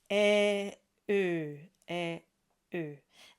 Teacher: we start with the e sound and we round around it